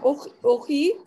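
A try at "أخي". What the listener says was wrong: अखी अखी अलिफ पे ज़बर है अखी अखी अख यानी भाई अखी मेरा भाई ठीक है अभी आप कन्वर्सेशन कर रही हैं मीनिंग समझ आ रही है अगर मीनिंग नहीं समझ आ रही है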